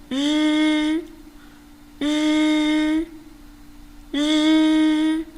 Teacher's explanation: 那么 日在发音的时候呢，它的动作基本和诗差不多，只是发音时声带要颤动